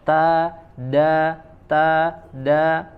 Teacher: Tempat keluarnya sama satu tempat, yaitu di ujung lidah ditempelkan ke daging tempat tumbuhnya gigi seri bagian atas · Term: huruf ta